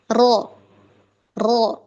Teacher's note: Nah, tapi huruf ro ini dia lebih tepat bagian awalnya, awal langit-langit depan, yaitu area masih gusi tapi sudah masuk ke bagian awal dari langit-langit, yaitu yang tempat bergerigi.